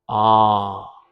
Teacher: The irony in RP is you don't pronounce the r sound. You'll just say ah. And you can make it a nice long vowel.